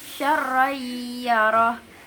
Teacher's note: ada idgham bigunah ketika tanwin bertemu dengan ya